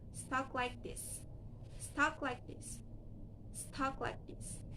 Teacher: The plosive consonant K is right before consonant L, so it can be unreleased. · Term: unreleased plosive consonant